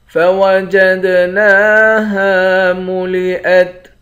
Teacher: دال پر قلقلہ کریں گے